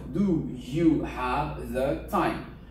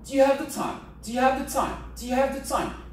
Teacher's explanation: le do, il est pratiquement pas prononcé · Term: réduits